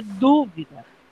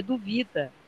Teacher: Dúvida é proparoxítona. Duvida é paroxítona.